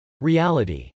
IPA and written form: r.iˈælət.i (reality)